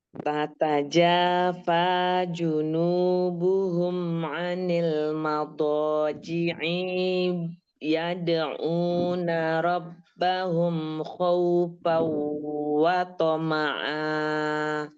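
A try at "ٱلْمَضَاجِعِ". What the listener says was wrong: Diulang. Madaji'i nya pendek.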